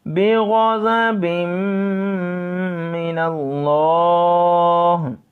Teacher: غین اور ضا جو ہے ہم نے اس کو پر پڑھنا ہے، موٹا پڑھنا ہے